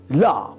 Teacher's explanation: Phonetically, it represents the voice alveolar lateral approximant La, produced by placing the tongue tip against the alveolar ridge while air flows along the sides of the tongue with vocal cord vibration